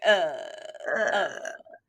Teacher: It was constant vocal fry.